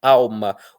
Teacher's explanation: algumas pessoas pronunciam como se o L fosse um u